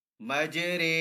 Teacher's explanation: میم جیم زبر مج، را امالہ والی رے، مجرے. اب یہاں پہ ری نہیں بلکہ رے، را امالہ والی رے